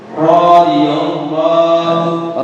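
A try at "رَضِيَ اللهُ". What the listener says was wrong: Ra-nya dibaca pendek.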